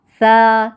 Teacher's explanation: सा की अदायगी में ज़बान की नोक को सामने वाले ऊपर के दो दांतों के अंदरूनी किनारों से नरमी से लगाकर बारीक आवाज़ में पढ़ते हैं